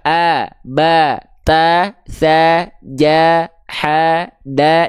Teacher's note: Kalau fathahnya vokal A itu lebih senyum, lebih terbuka.